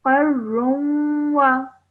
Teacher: So, and then you have a tanween on top of the ra as well, followed by a va mushaddad. So when you're joining the ra to the va, you have to do so producing a nasal sound in between for 2 seconds